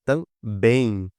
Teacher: A última sílaba é mais forte, olha só, também. O bem aqui é mais forte e termina em em.